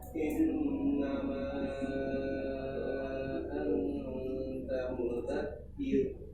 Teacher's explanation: innama itu 4 harokat atau boleh 5 majaz munfasil